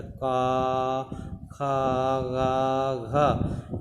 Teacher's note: क वर्ग का उच्चारण हम जो है कंठ से करते हैं।